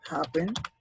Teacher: doble consonante de doble sílaba perdón y termina igual ejemplo happen si el acento así como yo lo pronunció no es en la última sino es en la primera sílaba